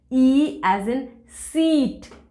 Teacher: ई vowel sound जो है that is a front closed vowel